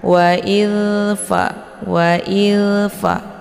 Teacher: Dzalnya dibacanya secara dialirkan secara lembut, jangan dipantulkan. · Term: dzal sukun